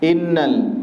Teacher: Nun bertasydid maka dibaca ghunna ada tempo di situ